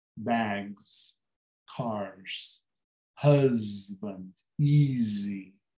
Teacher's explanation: muitos S no fim, lê-se como se fosse um Z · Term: som Z